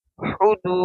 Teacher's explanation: واو کے اوپر جزم ہے اور واو سے پہلے پیش ہے تو واو مدہ ہوگا، اس کو ہم ایک الف کے برابر کھینچیں گے